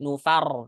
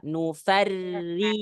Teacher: Ra tasydid dhamma, tebal. Ra tasydid kasrah, tipis.